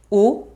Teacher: a close back-rounded vowel, U in ancient Greek